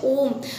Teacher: तो ओम बोलने में थोड़ा सा समय लगा, थोड़ी सी दूरी लगी, तो उसे हम प्लुत कहते हैं, जिसमें थोड़ा सा समय लग जाता है बोलने में, थोड़ी दूरी, 3 मात्रा का इसे कहा जाता है, इसे हम प्लुत कहते हैं।